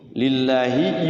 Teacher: Lafaz Allah dibaca tarqiq tipis ya.